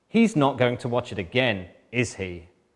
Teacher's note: I know he's going to watch it again, he always watches it again, and we know this from my falling intonation pattern because I'm checking